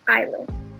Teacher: we omit the s and we pronounce it as island